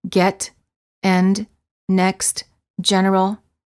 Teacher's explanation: the lips are farther apart part than for the A and the lips are relaxed the tongue is also relaxed and in the mid High position